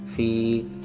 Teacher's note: Karena ada ya sukun, yakni fi, yang sebelumnya ada huruf berharokat kasrah. Maka kita membacanya dengan memanjangkan kasrahnya 2 harokat fi. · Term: mat tobi'i